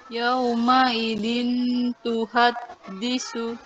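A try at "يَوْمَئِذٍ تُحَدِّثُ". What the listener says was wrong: Jadi tahapannya nun sakinahnya ditahan dulu, sudah betul. Yauma idzin, nah, tinggal nanti lidahnya turun sedikit, ya, tidak nempel di langit-langit atas, ya.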